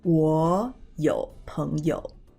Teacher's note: When there are two low tones together, such as 我 and 有, we will make the first low tone a rising tone.